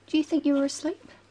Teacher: her voice goes up at the end of the sentence we call this a rising tone